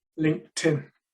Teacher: That's an example of linking where the t at the end of linked seems to sound as if it's at the beginning of the preposition in